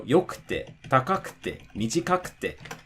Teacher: again, the drop is going to be before the ku.